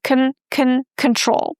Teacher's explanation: we stress the second syllable and in the first syllable we have this letter O, but we don't pronounce it as O or aw, we pronounce again the shwa sound. So it's not control, it's con con very short neutral sound. · Imagine that there is no vowel at all. That is just cu followed by n.